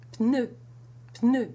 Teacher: you have the tongue in position for the N, with the tip of the tongue against the upper teeth, and you bring your lips together for the P.